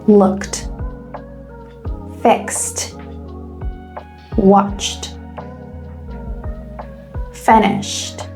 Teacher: let's go with a t pronunciation for voiceless sounds